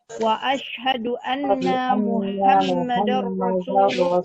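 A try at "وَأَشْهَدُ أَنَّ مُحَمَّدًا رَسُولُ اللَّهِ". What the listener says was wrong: Jangan panjang nunnya.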